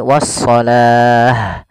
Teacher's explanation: Tapi karena kita waqaf, maka di sini awalnya kalau dia ada huruf ta marbutah seperti ini, awalnya was-salati, Kalau kita waqaf dia kita ganti dengan huruf ha yang disukunkan. Maka menjadi wassalah.